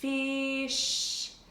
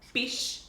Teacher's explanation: a really, really, really long and obvious 'f' sound at the start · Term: long F sound